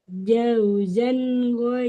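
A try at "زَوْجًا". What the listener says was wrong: kebalik Ibu, jangan jauzan. Jadi yang awal itu zainya dulu, jangan jauzan, tapi zaujan.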